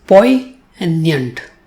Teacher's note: It has 2 syllables, poi and nyant, and the stress falls on the first syllable. In the second syllable, it has the sound y, but it doesn't have the letter y or I, as one would normally expect.